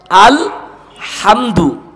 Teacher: হলকের মধ্যখান থেকে হা এর উচ্চারণ হবে